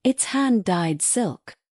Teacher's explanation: Put extra emphasis on hand-dyed, so the listener instantly understands the value.